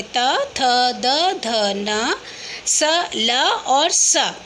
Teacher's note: जिन वर्णों को बोलते समय जो जीभ होती है वो हमारे दांतों को टच करती है उन्हें बोलते हैं हम दंत्य वर्ण